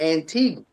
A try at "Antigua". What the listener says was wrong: Oh no, it's Antigua. That U is silent. Antigua, Like an H on the end. Antigua.